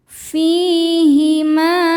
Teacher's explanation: Fi hukumnya adalah mad tobi'i dhohiri sebab ada ya sukun yang didahului harokat kasrah. Cara bacanya fi panjang 2 harokat.